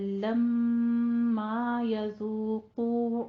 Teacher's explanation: بل لما يذوقوا عذابی، لما نہیں کہنا، لما آگے الف ہے، پورا دا کیجئے منہ کھول کے، لم غنہ کر کے، پھر ما، لما یذوقو، قوف کو بھی پر پڑھیں گے، دونوں ہونٹوں کو گول کیجئے.